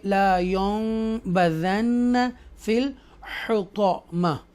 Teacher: کیونکہ نون ساکنہ کے بعد با آ رہا ہے اس لیے اقلاب ہوگا، اور ٹینی میم لگے گی، اور میم اور نون ساکنہ کا جو ساؤنڈ ہے وہ مرج ہو جائے گا. رائٹ، مکس کر کے پڑھیں گے لا ينبذن فی الحطامہ.